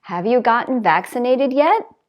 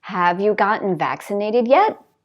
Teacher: because it's a yes/no question, the intonation goes up